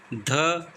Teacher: ध सघोष है महाप्राण है